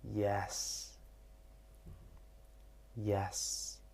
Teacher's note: The last tone choice available is level, which is flat. And it is common in English, not as much as rise or fall.